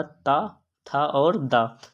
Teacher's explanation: जो ता वर्ग होता है ये कौन सी ध्वनियाँ होती हैं? दंत ध्वनियाँ होती हैं